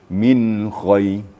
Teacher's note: Jadi betul-betul dijelaskan nun matinya. Jangan sampai ada embel-embel yang lain ya.